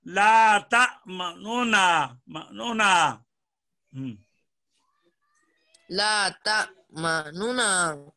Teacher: اگر ادغام نہیں کرنا، اظہار کرنا ہے، تو نون کی حرکت کا تیسرا حصہ ظاہر کرنا ہے